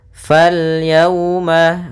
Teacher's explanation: di sini ada waw sukun di dalam fathah, maka di sini bacaan lin